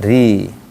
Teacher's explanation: Kalau dia kasrah ri tipis. Kalau tipis berarti mulutnya di datarkan.